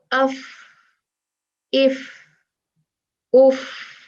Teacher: दांतों के किनारे और निचले होंठ के अंदरूनी हिस्से से लगाकर फा जो है वो अदा होता है और उसका मखरज वो ही है।